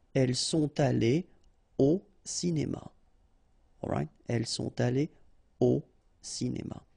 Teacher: no liaison after your participe passé here